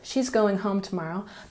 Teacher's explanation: but there's emphasis on home, so you know that this part of the sentence is important.